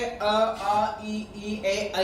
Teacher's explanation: इनके उच्चारण में आपके होंठ गोलाकार नहीं बनते